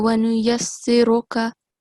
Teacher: So the letter Ra, because it carries a dhamma, it has to be a thick sound.